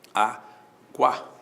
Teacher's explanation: o U é semivogal, o A é vogal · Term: ditongo